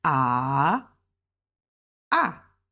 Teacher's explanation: the third tone ah it dips starts High go low